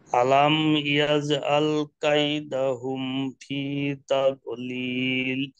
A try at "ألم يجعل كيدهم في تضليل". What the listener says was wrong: মাশাআল্লাহ।